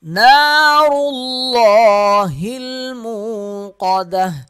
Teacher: را موٹا پڑھیں گے، لام کو موٹا پڑھیں گے اور 1 الف کے برابر کھینچیں گے۔ نار اللہ، ہا لام